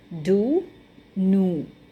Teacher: in northern and midland they just simply say oo in words like dew and new. Okay, so how the northern and midland people pronounce the word dew and new is do, new.